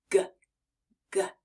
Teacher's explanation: do you feel that your vocal cords are buzzing just a bit when we say G as in the word goat or grass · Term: g sound